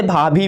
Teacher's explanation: अब पापा जैसे आप बोलिएगा तो दोनों ओठ देखिए दब जा रही है। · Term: ओष्ठ